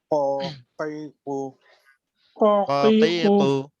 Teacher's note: জিহ্বার গোড়া, তার বরাবর উপরের তালুর সঙ্গে লাগাইয়া